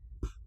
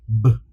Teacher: both of those sounds are actually created or sound out the exact same way. The only difference is one is unvoiced and one is voiced.